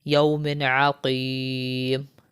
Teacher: یہاں پر دیکھیں دو زیر ہے مطلب تنوین ہے، اس کے بعد جو ہے یہ تنوین میں سے یعنی تنوین کے بعد دو زیر کے بعد حرف حلقی میں سے عین آ رہا ہے تو یہاں پر بھی ہم غنہ نہیں کریں گے